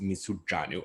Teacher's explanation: Again, that R has been strengthened to a retroflex affricate j.